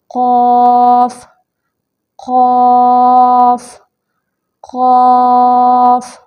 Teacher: اقصی لسان کا وہ حصہ جو حلق کے پاس ہے، اقصی لسان کا وہ حصہ جو حلق کی جانب ہے، جب اوپر کے لحات کہتے ہیں کوے کو، جو ہمارا کوا ہوتا ہے۔ اب جب یہ اقصی لسان یعنی زبان کی جڑ کوے کے پاس نرم تالو سے لگے گی تو حرف قاف ادا ہوگا۔ اس کی ادائیگی کر کے دیکھیں، قاف قاف قاف، تو یہ مخرج ہے قاف کا۔